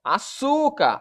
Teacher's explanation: Açúcar, a sílaba tônica é a penúltima.